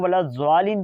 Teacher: اگر کوئی بندہ اس کو ولا زوالین پڑھتا ہے یا زواد پڑھتا ہے تو وہ فرنٹ کے دانت اور زبان کی نوک استعمال کر رہا ہے